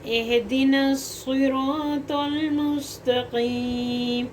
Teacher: یہ ہا سینے والے حصے سے ادا ہوتا ہے، یعنی حلق کے نیچے والے حصے سے، اقصی حلق سے. اس کو بھاری آواز میں پڑھتے ہیں. · صاد سیٹی والا پڑھا جائے گا اور موٹا بھی ہوگا اور سخت بھی ہوگا کیونکہ اس کے اوپر تشدید آ گئی. اور توا بھی موٹا پر پڑھا جائے گا، تو توا موٹا پڑھا جائے گا، ٹھیک ہے، اور لام کے ساتھ ملایا جائے گا.